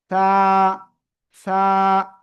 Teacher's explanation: জিব্বার আগা, উপরে 2 দাঁতের আগায় লাগাবো, লাগিয়ে নরম করে বাতাস বের করব, নরম করে আমরা উচ্চারণ করব,